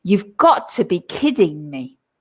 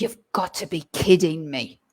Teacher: And my voice goes down at the end. And when my voice goes down, it's obviously something negative.